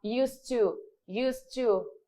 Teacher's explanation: Used to, eu falo desta forma, eu não vou pronunciar o meu D, certo? Como verbo, ele vai ser pronunciado, mas aqui nessa questão eu não vou pronunciar ele, eu não vou falar used to, tá?